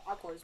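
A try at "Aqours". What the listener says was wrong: it's you write it Aquars, but you say Aqua.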